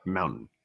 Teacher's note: you said it with a d and not with a t